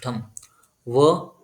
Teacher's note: ओठांना touch होतात वकारस दंतोष व ज्या उच्चार करता आपण त्यावेळेस खालच्या ओठाला दात टच होतो वरचा